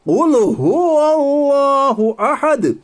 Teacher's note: دال پر وقف کرنے کی وجہ سے سکون آیا، دال حروف قلقلہ کے 5 حرفوں میں سے ہے، اس لیے دال پر قلقلہ ہوگا۔